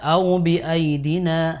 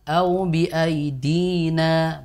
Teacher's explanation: Kemudian au bi aidina, bi aidi, dinya panjang Ibu, 2 harokat